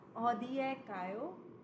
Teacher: you have to raise the final syllable because this is in question